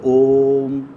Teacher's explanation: इस स्वर का उच्चारण में ह्रस्व स्वर से 3 गुना समय लगता है। ये जो है इसको उच्चारण करने में ह्रस्व स्वर से 3 गुना समय लगता है। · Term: प्लोत स्वर